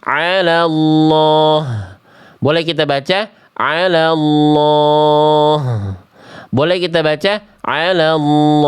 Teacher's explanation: Jadi dibaca boleh 2 harokat, tapi juga boleh 4, tapi juga boleh 6. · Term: Mad arid lis sukun